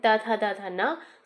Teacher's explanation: जो दंत ध्वनियाँ हैं उसके अंतर्गत आपके आ जाते हैं त, थ, द, ध, न